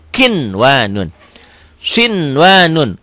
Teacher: Tetapi karena bertemunya satu kalimat, satu gabungan, tidak dibaca idgham, tapi harus dibaca jelas, dibaca idhar. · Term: idhar mutlak